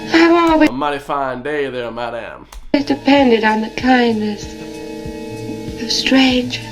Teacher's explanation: you hear how there's no R in strangers